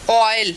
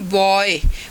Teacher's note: O और ई की जो साउंड है, एक glide from A back rounded vowel between open and half open. देखिए बैक राउंडेड वॉवल, ओ बोलते हुए लिप्स की पोजीशन हमारी राउंडेड है, तो ये बैक राउंडेड वॉवल है.